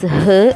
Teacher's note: it's a voiceless glottal fricative